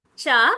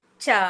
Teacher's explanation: చ అనంగానే అంత ఎక్కువ గాలి రాదు చ అనంగానే ఇప్పుడు నీ చెయ్యి ఉంది చూసావా ఇక్కడ నీ నోటి దగ్గర